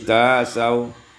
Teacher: ibdal hamzati alifan ditukar hamzah dengan alif menjadi tasaw